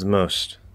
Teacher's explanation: i'm doing that th and i can just immediately close my lips into the m nothing between it